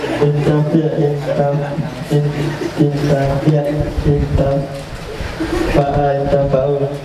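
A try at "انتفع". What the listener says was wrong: Kenapa anda baca fa?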